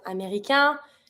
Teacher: I don't pronounce the N because AIN makes the word together.